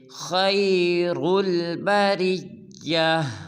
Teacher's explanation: وقف میں بریہ کی ہا کو خوب ظاہر کریں گے، جیسے خیر البریہ۔ اس حرف میں خا اور را کو پر ادا کرنا ہے